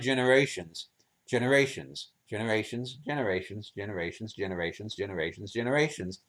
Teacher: there are clearly clearly four distinct stress levels